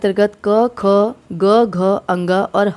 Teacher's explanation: 'क' समूह का उच्चारण स्थान कंठ (गला) है